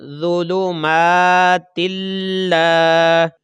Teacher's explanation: یہ لام کو ہم نے کھینچا کیونکہ زبر کے ساتھ الف تھا، اس لیے ہم نے اس کو کھینچ کر پڑھا ، اور تا کو ہم لام کے ساتھ ملائیں گے تو